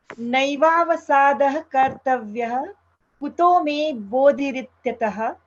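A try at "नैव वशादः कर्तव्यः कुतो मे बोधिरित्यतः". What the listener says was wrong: I did notice that you put the shadow vowel in, you said, to the English, you said naiva vasadaha kartavyah kuto me bodhirityatah. You put the shadow vowel there, whereas you did not put the shadow vowel after the tathagata, yasmat tathagata satyam, you said.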